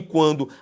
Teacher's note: E em quando, aquele tal ditongo crescente, porque o U aqui é pronunciado, formando um ditongo crescente, preste atenção, nasal pela presença do N de naná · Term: ditongo crescente nasal